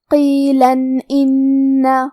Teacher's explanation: اگر ہم یہ آیت کو اگلی آیت کے ساتھ ملا کے پڑھے تو حرف الالف کلمت ان دوسری والی آیت میں حروف الاظہار میں سے ہے اور اظہار کا معنی ہے ظاہر کرنا اور تنوین کی اصلیت نون ساکن ہے تو ہم یہاں تنوین ظاہر کریں گے اور اسے نون ساکن پڑھیں گے اور بغیر غنہ سے یہ حکم کو ادا کریں گے